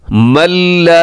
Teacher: نون ساکن کے بعد لام ہے تو یہاں پہ ادغام یرملون ہے